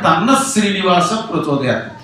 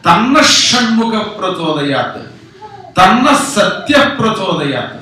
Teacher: ఎప్పుడు శ ష స ఈ 3 ఉన్నప్పుడు ఈ విసర్గ దాంట్లో కలిసిపోతుంది.